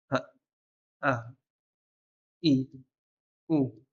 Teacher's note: Le fond de la gorge, on a le Hamza et le Ha. Le Hamza, ce sont les deux cordes là, au fond de la gorge, que lorsqu'ils se referment, la respiration elle se coupe. Puis quand tu laisses ouvrir et que ta voix elle passe, ça crée une lettre qui s'appelle Hamza.